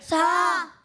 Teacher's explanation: پیارے بچوں، بہت سارے بچے سا کی ادائیگی میں سیٹی کی آواز نکالتے ہیں، تو ہمیں ایسا نہیں کرنا، کیونکہ سا کی جب ادائیگی کرتے ہیں تو اس میں سیٹی کی آواز نہیں آتی ہے